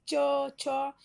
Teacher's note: जीभ आपके ऊपर तालू में सटता है